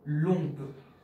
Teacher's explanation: as oncle starts with a vowel, and le ends with a vowel, the first word misses the vowel.